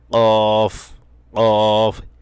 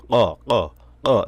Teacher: কফ কফ একটা বাড়ি মারতে হবে অর্থাৎ ছোট যে জিহ্বাটা আছে ছোট জিহ্বা থেকে একটা বাড়ি মারতে হবে আওয়াজ আসবে ছোট জিহ্বা থেকে আমাদের গলার ভিতর যে একটা ছোট জিহ্বা আমরা অনেকে আলা জিহ্বা